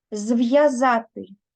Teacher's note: пишемо з апострофом тому що буква в позначають твердий звук в буква я позначає два звуки чуємо звуки й є Роздільна вимова пишемо апостроф присвячений це слово ми пишемо без